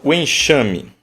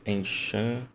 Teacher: O enxame, o X tem som de CH.